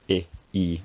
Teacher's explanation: the tongue is towards the front of the mouth high in the mouth and the lips are unrounded